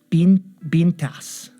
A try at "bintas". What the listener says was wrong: Not bintas. Bintas. No, not bintas. You're stressing the wrong part of the word. Is bintas.